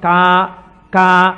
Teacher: కా కా పలకాలంటే ఎక్కడ పలకాలి? కంఠం దగ్గర పలకాలి. కా కా అంటే ఇక్కడ పలకాలి.